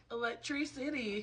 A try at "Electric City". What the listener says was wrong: No, not electricity. Stop putting a stop in the middle. stop in the middle. You know the middle. Electricity. Electric city.